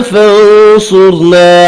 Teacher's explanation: فانصرنا صاد را دونوں پر پڑھے جائیں گے